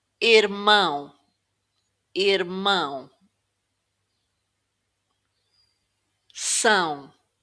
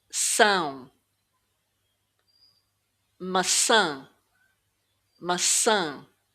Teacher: The tilde makes the vowel nasal. Now, you can think of this like a flattened N.